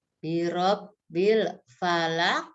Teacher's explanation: Nah, di sini ada alif lam komariah. Dan di akhir ayat ada huruf qaf hidup. Ya, qaf hidup dibaca qalqalah.